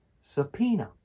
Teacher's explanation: with the stress on the middle syllable